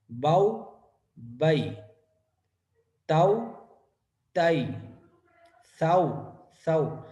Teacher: دیکھیے گا باؤ، با بھی واضح ہے، واو کا مخرج یعنی ہونٹ گول ہو رہے ہیں یہ بھی واضح ہے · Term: لین